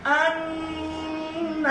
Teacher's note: 17 নম্বর মাখরাজ নাকের বাঁশি হইতে গুণ উচ্চারিত হয়